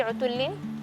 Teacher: Tadi ketika membaca huruf lamnya seharusnya ada tasydid, tadi kurang tasydidnya.